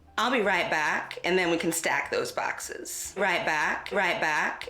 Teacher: A vowel being pronounced further back in the mouth among Bakersfield African Americans